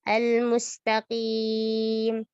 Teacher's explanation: Huruf qaf di sini kasroh, maka dia berada pada tingkatan paling rendah. Ketebalannya berkurang, tidak seperti saat dia fathah.